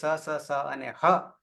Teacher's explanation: જ્યારે બોલીએ છીએ સ અને હ ત્યારે આપણા મુખમાંથી ગરમ શ્વાસ હવા બહાર નીકળશે પરિણામે એ ઉષ્મ વર્ણ છે